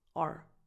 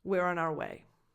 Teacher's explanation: the word our, when unstressed, becomes are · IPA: [ɑr]